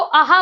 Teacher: बनेगा साउंड दो वर्ण का निकलता है आ और ह का आ का उच्चारण स्थान भी कंठ होगा ह का उच्चारण स्थान भी कंठ होगा